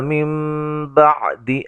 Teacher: نون ساکن کا اقلاب ہے، نون کو میم سے بدل کے پڑھیں گے